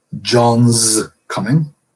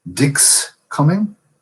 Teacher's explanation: You contract the verb is John's coming, the Z sound. Dick's coming, hard S, unvoiced.